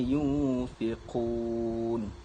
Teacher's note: Yang mana dalam ayat ini iaitu yunfiqun, iaitu ayat yang terakhir dalam ayat ini, yang mana nun mati bertemu dengan fa. Apabila nun mati bertemu dengan fa, bacaannya adalah dengung sebanyak 2 harakat, iaitu bunyinya yunfiqun. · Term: ikhfa hakiki